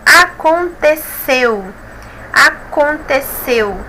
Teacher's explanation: a última sílaba é mais forte oxítona